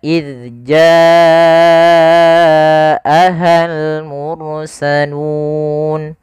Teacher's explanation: panjangnya adalah kita memanjangkan sepanjang empat harakat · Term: mad wajib muttasil